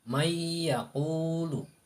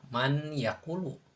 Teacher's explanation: Patokannya atau pedomannya, apabila nun sukun atau tanwin bertemu salah satu huruf idgham ma'al gunnah yang 4, salah satu dari yang 4, maka cara membacanya harus diidghamkan dan disertai dengan gunnah. Disertai dengan gunnah, yaitu suara dengung ya. Dengan mendengungkannya itu 2 ketukan atau 2 harokat. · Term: idgham bigunnah